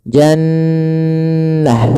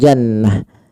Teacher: suara nunnya ditahan dulu, ya, jannah, tidak langsung jannah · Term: bacaan gunnah